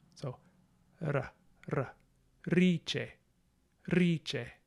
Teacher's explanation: the letter R, spelled R, is probably a tap or a trill, like R or R.